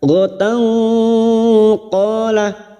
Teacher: Ghatan tak marbuta yang berharakat fathah tanwin bertemu qaf ikhfa hakiki. Kita samarkan bunyi fathah tanwin dan mendengung selama 3 harakat.